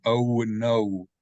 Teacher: of a w there that's not there so most English O's when a native English speaker reads we tend to add a w sound after the o sound even if the W is not in the word